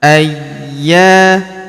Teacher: Huruf ya kita tahan dan kita tekan karena terdapat tanda tasdid di atasnya. Ayya. Kemudian huruf ya kita panjangkan dua harakat karena terdapat alif di depannya.